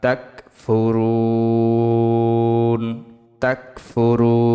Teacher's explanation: থামলে ৩ আলিফ টান, মধ্যে আরজি